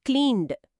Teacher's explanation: క్లీన్ అనే పదం ఎన్ శబ్దంతో ముగుస్తుంది, ఇది వాయిస్డ్, కాబట్టి క్లీన్డ్. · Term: వాయిస్డ్ హార్మోనీ